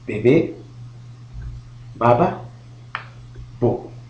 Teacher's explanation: elle se prononce lorsque la lèvre inférieure et la lèvre supérieure se touchent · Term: consonne bilabiale